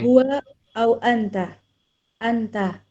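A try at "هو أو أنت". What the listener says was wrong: Penyebutan au-nya sudah pas dan saya lihat intonasinya sudah bagus.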